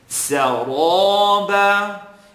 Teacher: I want you to put emphasis now on pronouncing the ra heavy. Saraba. And it's not so much about the shape of your lips as much as it is the air that you're controlling in the mouth.